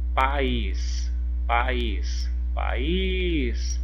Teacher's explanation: foi a última sílaba então é uma oxítona